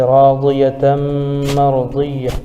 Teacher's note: راضیتم، الف سے پہلے را پر زبر ہے اس لیے مدہ بھی ہوگا اور یہاں را پر پڑھی جائے گی۔ تنوین کے بعد حروف یرملون میں سے میم آ رہا ہے اس لیے ادغام یرملون ہوگا، یعنی ادغام یرملون مع الغنہ، اس کو ادغام نافذ بھی کہتے ہیں، جیسے راضیتم مرضیہ۔